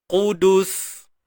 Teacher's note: Matikan sin jangan terlalu cepat. Sebab kat sin ni dah ada rokhawah dia. Dah ada sifat hams dia.